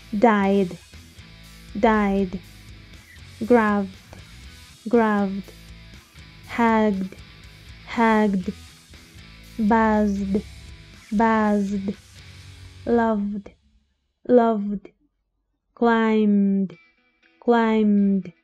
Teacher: Todas estas terminan en sonidos sonoros. Así que si quiero pronunciar su pasado, sería pronunciando la ed como una d.